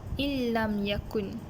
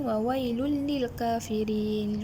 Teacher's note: Hendaklah dibaca tanpa gunnah. Maksud gunnah tu dengung, dibaca tanpa dengung. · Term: idgham bila gunnah